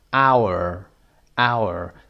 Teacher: silent letter هست اینجا. hش تلفظ نمیشه.